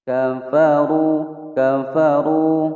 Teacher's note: ka pendek, fa pendek, ru panjang, ru-nya dibaca tebal